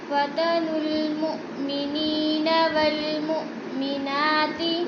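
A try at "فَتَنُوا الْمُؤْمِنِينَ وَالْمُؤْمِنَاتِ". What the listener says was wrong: वल मु पे थोड़ा सा झटका देना है, हमजा साकिन है, और ना को थोड़ा सा खींच कर पढ़ना है। मुअ्मिना की ना को खड़ी ज़बर है। वल मुअ्मिनाति सुम्मा लम यतूबू।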